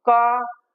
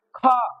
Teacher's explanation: जब ख कहा तो वायु निकल के हाथ पर लगी। तो क हो गया हमारा अल्पप्राण और ख हो गया महाप्राण